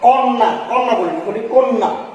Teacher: প্রমিত ভাবে আমরা কন্যা আঞ্চলিক উচ্চারণে বলতে পারি, কিন্তু প্রমিত হচ্ছে, প্রমিত উচ্চারণ হচ্ছে কন্যা। কটা অটা এখানে ক ওকার হয়ে গেছে, অটা হয়ে গিয়েছে ওকার